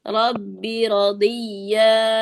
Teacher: Rabbi, jangan dipanjangin binya.